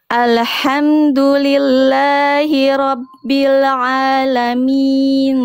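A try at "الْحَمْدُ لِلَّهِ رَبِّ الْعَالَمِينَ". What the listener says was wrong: Lam sukun yang awal jangan alhamdu. Lam tidak punya sifat qalqalah, ya. Jadi jangan sampai dipantul-pantulkan. Alhamdulillahi rabbil alamin.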